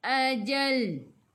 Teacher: matikan dengan lam hujung lidah menyentuh gusi atas